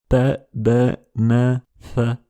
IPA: t̼ d̼ n̼ θ̼